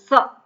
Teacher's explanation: આપણે જ્યારે બોલીએ તો દાંતને જીભ છે દાંતને અડે